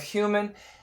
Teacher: Americans almost always keep the H